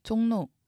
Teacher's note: 비음화 일어납니다 리을이 니은으로 바뀝니다